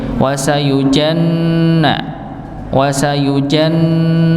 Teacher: jika huruf nun yang bertasydid maka dia dibaca dengung ngih dibaca dengung maka ditahan ngih wasujanna wasujanna ng di ditahan ya sebagaimana huruf nun yang